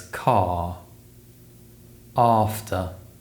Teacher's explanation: the r sound is produced with the tongue low and back in the mouth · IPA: /ɑː/